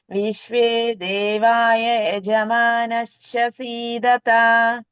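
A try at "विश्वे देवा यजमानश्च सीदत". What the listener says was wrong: ఇక్కడ దేవాయ కాదు, దేవా.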